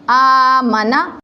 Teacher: کھڑی زبر کو ہم ایک الف کی مقدار لمبا کریں گے۔